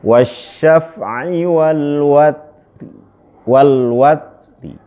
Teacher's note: kalau antum mau menggunakan waqaf raum, itu ro-nya dibaca tapi tidak 100%, sepertiganya saja.